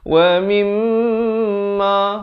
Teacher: mim sabdu, wajibul gunnah, dengungkan 2 harakat